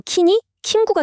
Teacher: 이건 주로 영어 같은 외레어에서 나타나는 현상인데요. 킹처럼 이응 받침을 처리할 방법이 없으니까 아예 그 뒤에 모음 우를 붙여서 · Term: 음절화